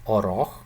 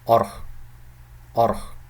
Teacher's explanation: it's pronounced slowly as oroch, which means to enter, but in fast speech, in normal speed speech, actually, this is pronounced as orch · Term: reduced vowel